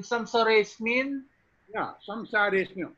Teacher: so the A basically disappears, becomes zero value. So in samsare smin, samsare smin, O disappear.